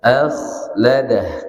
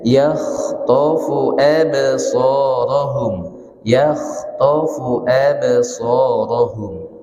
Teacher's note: Maka huruf kha itu mengalir, tidak putus. Kalau bismillah, contohnya akhladah, kita garukkan kuat-kuat, tidak bisa jalan ya, maka dia sedikit saja, akhladah.